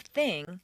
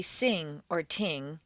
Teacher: The unvoiced th is like an s between the teeth. Most people tend to replace the unvoiced th with s or t and the voiced one with z or d.